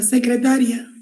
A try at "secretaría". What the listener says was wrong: Bueno, si lleva acento no sería secretaria. Secretaría. Secretaría.